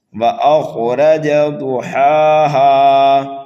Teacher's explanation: حرف ضاد کو پر پڑھنا ہے، ہا کو یعنی بڑے ہا کو کھینچ کر کے پڑھنا ہے اور چھوٹے ہا کو بھی کھینچ کر کے پڑھنا ہے۔